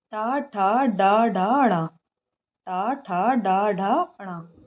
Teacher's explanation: ट वर्ग के अंतर्गत कौन-कौन से व्यंजन वर्ड आते हैं जिनकी आवाज मूर्धा से आती है